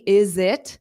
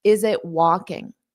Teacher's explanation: I take that t and I just make it a flap